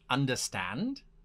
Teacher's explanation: it is my inflection that turns it into a question rather than any other sound